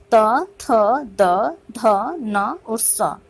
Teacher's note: दंत्य व्यंजनों के उच्चारण में जो हमारी जिह्वा है उसकी जो नोक है ऊपरी दंत पंक्ति को स्पर्श करती है। दंत्य व्यंजन त्वर्ग की श्रेणी में आते हैं, त, थ, द, ध, न और स।